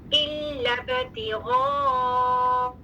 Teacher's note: الف مد الجوف سے کلیئر حمزہ الحلق سے کلیئر